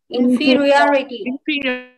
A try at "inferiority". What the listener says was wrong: Okay. Good. Very good.